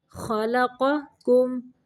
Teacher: पहला कॉफ मोटा है और दूसरा बारीक है।